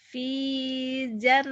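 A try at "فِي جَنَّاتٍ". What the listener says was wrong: Jimnya jangan ragu, keras. Pija Jakarta. Fi jannati. Panjang, panjangnya panjang. Jimnya Jakarta, Jatinegara, jajah. Ja-nya keras. Fi jan.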